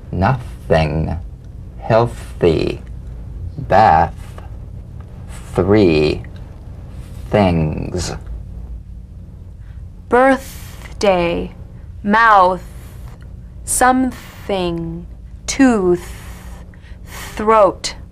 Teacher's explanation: the unvoiced tongue point to teeth fricative consonant. Play this dry, gentle, whispered, lightly, and softly without the slightest pressure. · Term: voiceless th, voiceless TH